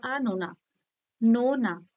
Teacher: হালকা করে টাচ দিয়ে নো টার ওপর বেশি জোর দেওয়া হচ্ছে শ্বাসাঘাতটা থাকছে পারধ্বনির উপর শ্বাসঘাতটা থাকছে না যে আনো না নো